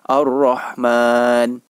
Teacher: Cara membacanya adalah dengan tidak mengucapkan 'al', jadi Anda membacanya langsung sampai huruf 'r'.